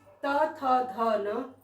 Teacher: जिनका उच्चारण ऊपर के दांतों पर जीभ लगाने से होता है